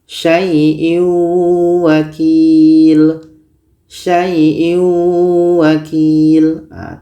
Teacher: Tanwin ini kita masukkan ke waw tapi dia kurang sempurna masuknya. Maka dikategorikan dalam idgham naqish.